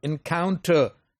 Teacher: Count is stressed because first and the last syllables are weak.